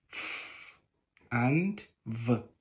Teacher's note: In the course of production, the lower lip and the upper teeth are involved, as in F and V. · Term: Labiodental